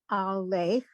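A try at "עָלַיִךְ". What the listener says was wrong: The second one, look at that one again because there was a vowel under that last letter. Aleche.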